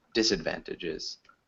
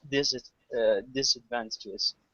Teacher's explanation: So we'd emphasize the first syllable